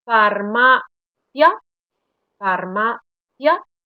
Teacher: Prácticamente la vocal cerrada, esa I, está un poco escondida detrás de la vocal abierta y la vocal abierta tiene como más peso. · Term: diptongos